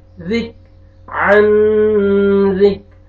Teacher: کاف کا لائٹ سے ساؤنڈ آئے گا, ڈبل نہیں آئے گا